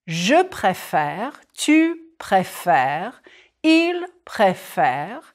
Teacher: It's the accent change that opens up the second E. The accent aigu becomes an accent grave.